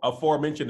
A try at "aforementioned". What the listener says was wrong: weird pronunciation on the afore part, but at least you got the back.